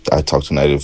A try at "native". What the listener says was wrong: You almost did native. Kind of went halfway between A and I. Nay. But we want to do nay.